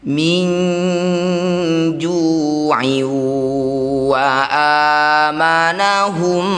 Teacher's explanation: Ini disebut bacaan namanya idgham bighunah. Masukkan bunyi tanwin pada wau. Bibir mecucu dengungkan dua harakat. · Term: idgham bi gunnah